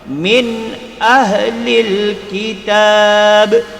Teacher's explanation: Jadi nun kena baca jelas. Tak boleh baca dengung. Kalau baca dengung jadi min ahlil, salah. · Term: izhar halki